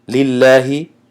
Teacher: لام لفظ الله ترقیق یعنی تنک شده است